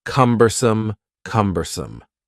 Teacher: The word cumbersome has 3 syllables, and the stress is on the first syllable